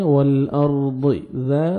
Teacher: والارض ذات الصادع، والارض، واو کو لام کے ساتھ ملائیں گے، لام کو آپ نے ہلانا نہیں ہے، وال ایسے نہیں پڑھنا، وال، را ساکن سے پہلے زبر ہے، آپ نے را کو پر کرنا ہے، والارض، ضاد کو موٹا کر کے پڑھنا ہے